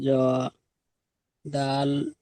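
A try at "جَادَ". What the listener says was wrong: না টান দিতে হবে তো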